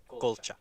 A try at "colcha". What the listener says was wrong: It sounds like you're saying coche like car. Or concha like shell.